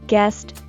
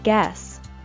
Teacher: Be sure to pronounce the final sound T in guest, otherwise you will call it guess, which is a completely different word.